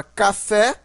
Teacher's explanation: palavra primitiva café a sílaba mais forte é o fé que é a sílaba tônica